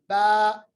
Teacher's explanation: बा is pronounced from the वेट part of the both lips, यानी हमारे दोनों होंठों का जो अंदर वाला वेट वाला हिस्सा है उसको मिलाने से बा अदा होता है, बा। It is articulated by closing the two lips together, but a stronger closure than the मीम · बा जो है ये भी हरफी शुफ्ती है, यानी ये भी होंठों से अदा होता है और ये पढ़ना बहुत ही आसान है। जब दोनों होंठों का जो तरी वाला हिस्सा, अंदर वाला हिस्सा आपस में मिलता है तो हरफी बा अदा होता है